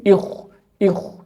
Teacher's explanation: berhadapan dengan k yang sukun ini harus dibaca tafkhim